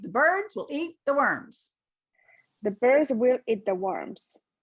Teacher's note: so don't give will importance it's an unstressed word